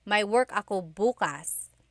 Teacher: If you say bukas, bukas, emphasis is on the first syllable, that means tomorrow.